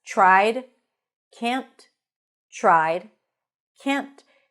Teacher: we can see that we have the tried and we have the can't stressed.